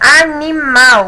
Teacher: Mal é a sílaba mais forte, é oxítona.